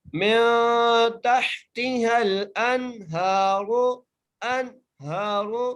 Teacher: ہا کے اوپر کھڑی زبر ہے اس لیے ہم ہا کو ایک مقدار کھینچ کے پڑھیں گے ، ہا کو موٹا کر کے پڑھیں گے، من تحتها الانہار،